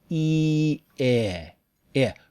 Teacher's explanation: The English word uses the lax vowel, I, not the tense vowel, E. It's lower and a little back. I. Relax when you say it.